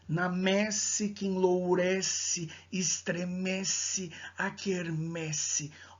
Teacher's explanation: a repetição sistemática das consoantes sibilantes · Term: aliteração